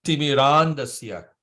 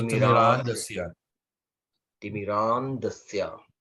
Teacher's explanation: So you notice the first A is long and the others are short.